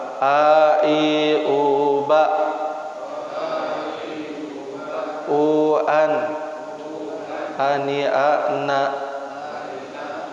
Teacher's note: Yang pertama, pangkal tenggorokan keluarnya adalah A sama H ya.